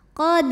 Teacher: ro dibaca secara tafkhim karena ro berbaris tanwin fathah maka dibacanya ditebalkan qod apabila berhenti hukumnya adalah madwad karena ada baris tanwin fathah